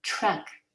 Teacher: If your children write independently, you may have noticed them writing, for example, the word truck with CHRK or JRK or DJRK. Feel it, the T in the beginning of truck is affricated